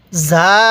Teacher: করে উচ্চারণ করব তাহলে জিম জবর যা ঝা আলিফ জবর ঝা এই ঝা এর মধ্যে আমরা চার আলিফ টান দিব